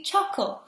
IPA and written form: ˈtʃʌk(ə)l (CHUCKLE)